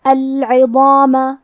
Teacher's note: زبان کے سر اور اوپر والے دانتوں کے اندرونی کناروں سے پڑھیں گے کیونکہ ضو حروف التفخیم میں سے ہے تو ہمیں یہ حرف کو بھاری آواز میں پڑھنا ہے اور کیونکہ اس کے بعد مد الف ہے تو ہم مد الف کو بھی تفخیم سے ادا کریں گے۔